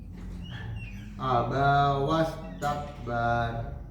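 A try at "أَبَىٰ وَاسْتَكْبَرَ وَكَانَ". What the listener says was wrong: Enggak usah diwakaf langsung. Enggak usah diberhenti. Wastakbara wa kana langsung.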